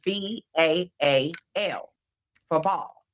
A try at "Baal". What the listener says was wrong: I think it's pronounced Bell, isn't it? Like Bell, not ball, Bell.